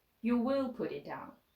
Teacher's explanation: Said with the falling intonation, or you will put it down, with the stress falling on will